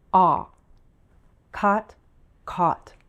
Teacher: part of our tongue is high and our jaw is low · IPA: /ɔ/